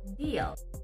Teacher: the tongue tip is still raised through the roof of the mouth but pulled back into the mouth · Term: dark l